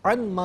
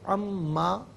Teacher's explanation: ہے اصل میں ان ما، ملا کر پڑھنے کی صورت میں ان میں نون ساکن کو ما کی میم کے ساتھ ملائیں گے، میم کی آواز کو غننے کے ساتھ ادا کریں گے